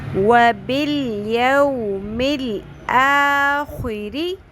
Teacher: خو حروف مستعلیہ میں آتا ہے. خو کے نیچے زیر بھی آ جائے تب بھی خو کو ہر حالت میں پر ہی پڑھنا ہے